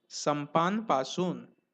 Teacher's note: anuswar on pa, is pronounced as half n, even if next consonant is again p